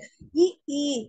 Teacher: அந்த மேல்வாய் பல்லை பொருந்துற முயற்சியால பிறக்கக்கூடியது இ ஈ.